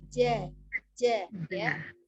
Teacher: Huruf yang tipis ya, lidahnya terhampar. Jadi tidak dibaca dengan tebal.